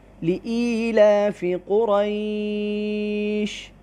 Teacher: قریش قاف را دونوں کو پر پڑھے